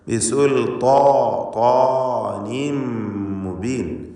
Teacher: ബിസുൽത്താൻ ഇസ്തിഅലാന്റെ അക്ഷരമാണ്. തടിപ്പിച്ച് ഉച്ചരിക്കണം. അതിൻ്റെ ദീർഘാക്ഷരമായ അലിഫിനും തഫ്ഖീമാണ്.